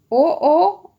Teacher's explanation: ठीक है, तो जब ओ वर्ण की उत्पत्ति हमारी अ प्लस उ से हुई है तो हम इनके उच्चारण स्थानों को भी प्लस कर देंगे, कंठ प्लस ओष्ठ। इस प्रकार ओ का जो उच्चारण स्थान होगा कंठ और ओष्ठ दोनों होंगे। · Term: कंठोष्ठ